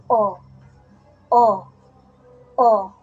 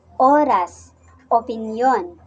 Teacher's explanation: e e e e halimbawa ilaw ibon pag sinabi nating o ang posisyon ng ating dila ay nasa gitna at ang bahagi naman ng ating dila ay nasa likod kaya ito ay binibigkas na o o o halimbawa oras opinyon